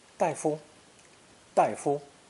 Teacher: daifu may be spoken with a neutral tone for the second syllable, since they're very common terms of address.